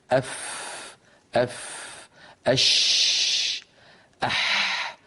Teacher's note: لما نقول مثلا أف، جربوا ضعوا يدكم هكذا، أف أف أش أح، تجد بأن هناك هواء متدفقا مع هذه الحروف. وبالإضافة إلى هذا لو وضعنا يدنا هنا على الحنجرة وأعدنا نطق تلك الحروف أف أح أش، لا نجد اهتزازا هنا في الوترين الصوتيين في الحنجرة.